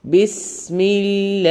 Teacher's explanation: ഹ തൊണ്ടയുടെ അക്ഷരം എന്ന് കൃത്യമായി പറയുക